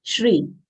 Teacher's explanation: Shri is a long sound and will not say Sri, it is Shri. Shri comprises of half palatal sh, full ra having long e sound.